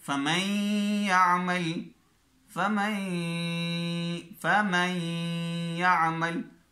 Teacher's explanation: غنہ بھی ہو رہا ہے اور ملا بھی دیا، ادغام کر دیا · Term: ادغام بالغنہ